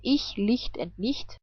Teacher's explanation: CH can also be pronounced like hi, but without voice